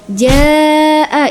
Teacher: Apabila ada mad thabi'i bertemu dengan hamzah dalam satu kata jaa tak bisa dipisahkan di sana maka dia bacanya adalah lima harakat. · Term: mad wajib muttasil